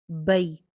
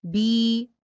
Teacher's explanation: اس کی ادائیگی مدہ کے مقابلے میں جلدی ہو رہی ہے، ٹھیک ہے، اس کے اوپر ٹائم نہیں لگتا اور اس کا وزن ٹھیک ہونا ضروری ہے۔ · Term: یائلین